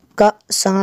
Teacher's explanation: حمزہ ساکنہ کو ہمیشہ جھٹکا دے کر پڑھیں گے، الف کے اوپر یہ جزم ہو یا زبر زیر پیش ہو تو اس کو حمزہ ہم کہیں گے، اور حمزہ ساکنہ کو ہم ہمیشہ جھٹکا دے کے پڑھیں گے۔